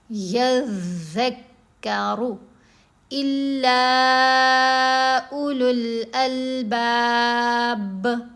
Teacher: مشدد حروف، یہ 2 دفعہ پڑھے جاتے ہیں